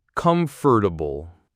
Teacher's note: That fort part often gets like compressed.